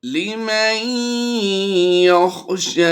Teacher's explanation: نون ساکن کے بعد حروف یرملون میں سے یا ہے تو ہم نے یہاں پر ادغام مع الغنہ کرتے ہوئے غنہ کر کے پڑھنا ہے